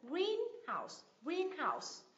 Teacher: Nhấn âm tiết thứ nhất